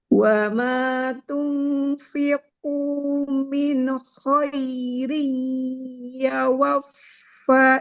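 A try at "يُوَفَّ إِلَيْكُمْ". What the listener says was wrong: bukan ya wafa ya. Harokatnya hati-hati Bu. Huruf ya-nya berharokat dhamma.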